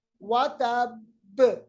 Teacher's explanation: यानी बा पे हमने शिद्दत के साथ कलकला किया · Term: कलकला कुबरा